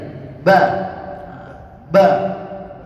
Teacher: Huruf ba, hurufnya di mana? Dua bibir ya.